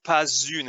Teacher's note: Notice I also do the liaison here since une is a vowel, right? So pas une, it sounds like a Z sound.